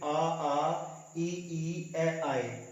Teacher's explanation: उसके आधार पर होठों की आकृति होठों के उसके हिसाब से उच्चारण किया जाता है। तो आवृत्त मुखी जिसमें होठ गोल नहीं होते हैं